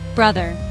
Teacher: Two syllable word. Stress is on first syllable.